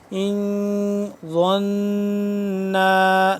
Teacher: ضا زبان کی نوک کو سامنے کے اوپر والے دانتوں کے بیک سائڈ پہ جب لگائیں گے تو ضا اپنی جگہ سے ادا ہوگا۔ ان ظن، نون الف مد زبر نا، 2 سے 3 الف کے برابر اس کو ہم لمبا کریں گے۔ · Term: ضا کا مخرج